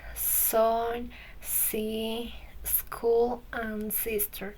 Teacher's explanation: Now I will explain and the sound is a voiceless. We produce it by letting air pass through the space between the tongue and the teeth.